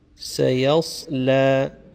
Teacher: So we have to be careful here because the first one is a sin, a normal flat sin, or just like a S, but the second sound is a sad, wherein now the same S sound, but it's an emphatic or a full mouth sound where the tongue inside will become completely round